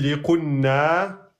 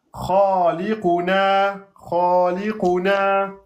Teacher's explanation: Attention, le na, il n'y a pas de shidda. mais c'est un deux temps.